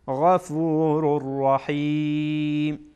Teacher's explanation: بعد از تنوین را آمده، را از حروف ادغام هست، ادغام میکنیم